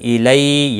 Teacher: الی یا لین ہے، تھوڑا نرمی کے ساتھ کھینچ کر ادا کریں گے